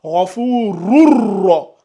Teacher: Dès que vous commencez le rou, vous enchaînez avec le ra.